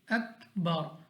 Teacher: را ساکن ہو جائے گا، را کو ہم نے موٹا پڑھنا ہے